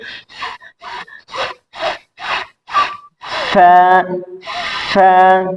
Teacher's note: দুই ঠোঁট হইতে বাতাস বের হবে, দাঁত চাপ থাকবে, চাপে পরে তারপর উচ্চারণটা হবে ফা, ফা।